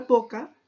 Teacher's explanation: Así, en un acto concreto de habla, como al pronunciar la palabra boca, la fonética describe a la B como consonante bilabial, oclusiva, sonoro y oral